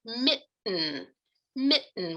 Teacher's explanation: If we think about a word like mitten, mitten with that glottal stop in the middle, the tongue's not even producing that allophone of T.